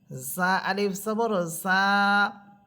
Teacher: জা জিব্বার আগা সামনের নিচের 2 দাঁতের আগার সাথে লাগবে,